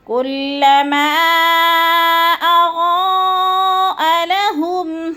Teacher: حروف مدہ کے بعد حمزہ دوسرے کلمے میں آ گیا ہے تو مد منفصل۔ 4 الفی مد ہے، 4 حرکات کے برابر ہم نے اس کو لمبا کرنا ہے · اضاء پہ جو ہے مد متصل ہے، اس کو بھی 4 الف کے برابر ہم نے لمبا کرنا ہے۔